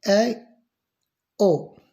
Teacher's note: अर्धसंवृत वह स्वर जिनका उच्चारण करते समय मुंह आधा खुलता है।